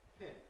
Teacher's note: it's not appropriate in English to say [pʰʰɪn] rather than [pʰɪn], just a bit of aspiration